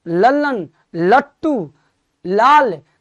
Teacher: तो हमारी जीभ जो है वो नीचे दांत को छू रही है, अतः ल का उच्चारण स्थान भी दंत है।